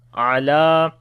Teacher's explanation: This lam we long due to standing fatha on it.